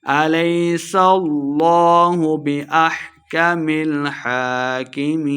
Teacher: لفظ اللہ کا لام موٹا پڑھا جائے گا